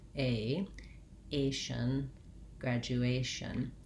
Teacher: A is a diphthong in American English, and it has two sounds, so you want to make sure that you're starting on the tense A and then relaxing into the less tense I sound